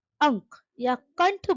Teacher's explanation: जब हम अंक या कंठ बोलते हैं तो हवा नाक से निकलती है। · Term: अनुस्वार